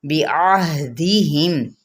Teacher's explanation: وسط حلق سے عین ہے اور ہا کہاں سے ہے، اقصی حلق سے